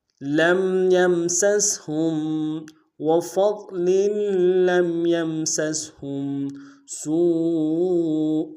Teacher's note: سین کو باریک ادا کرتے ہوئے واو کے ساتھ ملائیں گے ، واو مدہ اور واو مدہ کے اوپر مد عارض ہے،